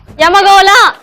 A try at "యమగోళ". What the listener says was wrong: నువ్వు స్ట్రెస్ చేయట్లేమా యమగోళ అలా stress